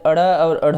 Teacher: यानी कि आप इसे कह सकते हैं कि जब भी वायु इसके उच्चारण में जो जीवा होती है वह लुंठित होकर बहुत तीव्र गति से वायु को फेंकती है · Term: उत्क्षिप्त व्यंजन